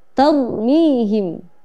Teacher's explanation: Cara membacanya untuk menunjukkan ketebalan huruf ra itu adalah dengan sedikit memoncongkan bibir, ya, sedikit saja dengan memoncongkan bibir. · Pada kata tarmihim, ra sukun ini dibaca dengan cara tebal atau tafkhim